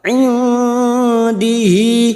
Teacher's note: nun sukun bertemu Dal ikhfa Hakiki kita semarkan bunyi nun sukun dan mendengung selama dua atau tiga harakat